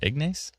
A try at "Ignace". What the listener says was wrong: Ignis. Yeah, you don't pronounce it the ace.